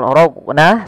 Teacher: Di sini huruf qafnya ada bacaan qalqalah yang dimana dia harus dipantulkan. Kesalahannya sama, kesalahan yang terjadi pada qalqalah yaitu satu, tidak memantulkan, yang kedua menambahkan hamzah.